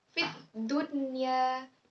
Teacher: nun mati bertemu dengan huruf ya, seharusnya itu dibaca secara idgham bi gunnah, tetapi ia malah dibaca izhar. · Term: izhar mutlak